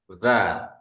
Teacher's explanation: Bunyinya keluar dari ujung lidah. Ujung lidah ya. Ujung lidah kita ini. Serta menepati ujung dua gigi seri yang bawah.